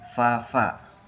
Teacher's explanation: Ee cara kerjanya yaitu gigi bagian atas menyentuh bibir bagian bawah dan udara keluar melalui celah keduanya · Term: labio dental